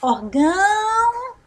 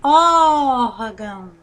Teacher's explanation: nós vamos falar órgão observe que nós estamos órgão mais tempo então essa palavra é a sílaba tônica dela é ó então é uma palavra paroxítona